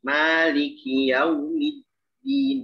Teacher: Dalnya jelas. Sempurnakan syiddah pada dal. Jangan bercampur dengan ta.